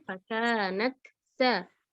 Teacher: Selesaikan dulu taknya, jangan idgham ke sin.